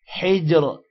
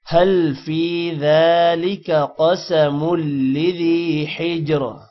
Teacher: حجر جین پر قلقلہ ہے۔